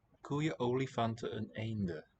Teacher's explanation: When a vowel follows that final N that's normally dropped, we'll hear it. It reappears.